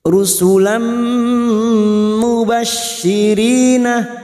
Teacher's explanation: masuk dan mendengung masuk pada huruf berikutnya yaitu huruf mim dan mendengung selama dua atau tiga harakat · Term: Idgham bunah, idgham bi gunnah